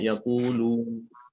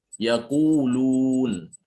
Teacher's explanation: Yang pertama adalah dia kurang memoncongkan bibir dengan semestinya, ya. Seharusnya ketika dia mengucapkan huruf wawu maddiyah itu disertai dengan memoncongnya bibir, ya, harus sempurna bibirnya.